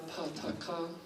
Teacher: en inglés, los fonemas oclusivos sordos, PTK, se pronuncian con distensión aspirada , PTK, ¿vale?, cuando están en inicio de pie. Y ya